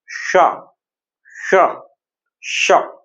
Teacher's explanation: जीभ हमारी मूर्धन को स्पर्श करती है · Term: मूर्धन्य शा